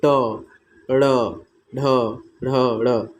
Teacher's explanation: इसके उच्चारण में जो जिह्वा होती है वह पीछे की ओर मुड़ती है। जीव, जैसा कि आप अगर इसको ट वर्ग का उच्चारण आप करेंगे तो जो जिह्वा है वह पीछे की तरफ से ट, ड़, ढ, ढ, ड़, देख रहे हैं जिह्वा जो है पीछे की तरफ मुड़ रही है, तो इसको मूर्धन्य व्यंजन कहते हैं।